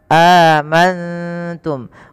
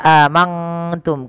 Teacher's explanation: Nun sukun bertemu dengan ta, ikhfa. Cara membacanya, nunnya samarkan kepada huruf ta, amantum, bukan hanya amangtum. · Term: Ikhfa hiki